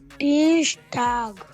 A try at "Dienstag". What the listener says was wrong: Dienst. न भी आ रहा है देखो एन है बीच में. Dienstag. Tag.